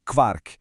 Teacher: Em alemão, essa combinação QU vai ter som de KV.